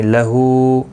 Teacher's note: ہا کے اوپر الٹا پیش ہے، ایک الف کی مقدار کے برابر کھینچ کر پڑھیں گے